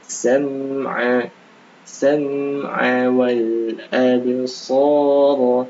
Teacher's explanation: Kemudian dikata as-sam'a juga sama, mim sukun bertemu ain juga dibaca jelas